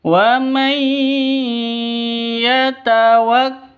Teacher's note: di sini ada nun mati bertemu dengan ya, masuk ke ya dengan dengung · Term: idgham bi gunnah